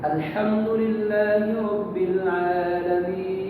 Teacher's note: मद्दे आरिज़ वक्फ़ी में 4 से 5 अलिफ के बराबर खींच करके पढ़ा जाए